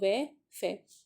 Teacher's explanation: ओ ओ व फ मतलब दंतोष् दांत से और ओष्ठ से मतलब होठ से और दांत से मिलके आवाज निकल रही है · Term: दंतोष्ठ